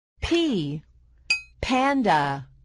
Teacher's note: First, press your lips together. Next, push out a puff of air as you open your mouth to make the p sound